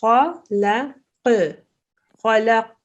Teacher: So the qaf has a slight echo sound.